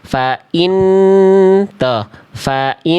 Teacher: Faannya ditahan dulu dua harakat seperti itu. Fainni tuh annya kan ditahan dulu baru masuk ke vokal i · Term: gunah